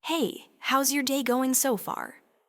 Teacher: did you catch that slight lift, that gentle rise, at the end of so far?